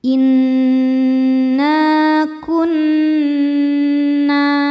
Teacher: kun nun tasydidnya dihukumi dhunah musyaddadah karena nun bertasydid. Cara bacanya berdengung. Tahan dengungannya kurang lebih dua harakat.